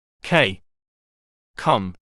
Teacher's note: Voiceless stop, back of tongue to back roof